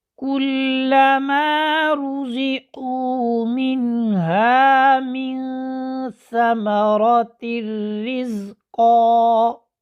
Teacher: قاعدہ یہ ہے کہ نون ساکن اور نون تنوین کے بعد اگر لام اور را، یہاں پر را آ رہا ہے تو کیا ہے، نون ساکن اور نون تنوین کو را سے ملا دیں گے۔ یہاں پر نون تنوین کو ہم نے را سے ملا دیا لیکن غنہ نہیں ہو رہا